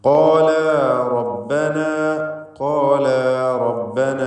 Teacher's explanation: ഖാല റബ്ബന റാഹ് തടിപ്പിച്ച് തഫ്ഖീം ചെയ്ത് ഉച്ചരിക്കുക. റബ്ബന എന്നതിലെ അലിഫിൻ്റെ ദീർഘം മദ് മുൻഫസിൽ ജായിസാണ്.